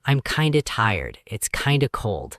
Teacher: The T disappears, the sounds compress. Kinda is kind of, the F softens away.